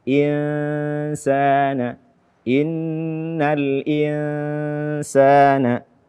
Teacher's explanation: Al-insan, nun sukun atau tanwin setelahnya sin, hukumnya adalah ikhfa hakiki. Maka hendaknya kita samarkan bunyi nun mati tersebut.